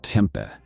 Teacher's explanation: KJ, though, is lighter and more whispery, like exhaling a soft h while your tongue is near the front. Think a hushed blended with a y.